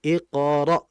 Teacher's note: jangan sampai terlalu dalam pengucapan hamzahnya. Yang dikhawatirkan akan menjadi ain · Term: hamzah mati